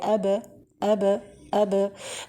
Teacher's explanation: For example, if it is the ba, so we have the meeting between the upper and the lower lip. After we directly meet them together, we separate directly between them without adding fatha or dhamma or kesra or any vowel. So we just say aba, aba, aba, this way. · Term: qalqala